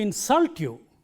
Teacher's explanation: When you use this word as a verb, the stress is on the second syllable.